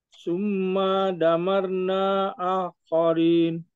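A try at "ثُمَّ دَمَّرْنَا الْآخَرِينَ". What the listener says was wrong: damarnal akhirin. Al-nya dijelaskan karena tadi kan kita sudah belajar al ketemu hamzah maka dibaca damarnal akhirin.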